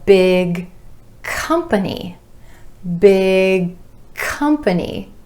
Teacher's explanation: holding that tongue up for the final G in big and releasing into the k sound for company,